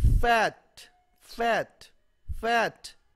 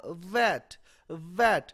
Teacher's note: मैंने जब कहा फैट, फैट, फैट, और जब मैंने कहा वैट, वैट, जो फै कहते हुए और वह कहते हुए मेरे ऊपर वाले जो दांत हैं वो मेरे नीचे वाले होंठ के को टच कर रहे हैं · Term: लेबियोडेंटल्स